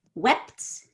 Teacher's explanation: it actually ends in a T sound, which is the voiceless counterpart of D